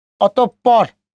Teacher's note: বিসর্গ এর পরের বর্ণ 2 বার উচ্চারিত হবে।